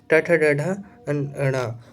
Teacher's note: ट ठ ड ढ ण और र भी जो है मूर्धन्य होता है